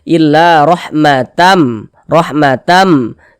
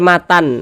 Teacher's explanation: bunyi tanwinnya dimasukkan ke huruf mim melebur ke huruf mim kita baca illa rahmatam rahmatam dibaca Matam Jangan dibaca Matan nah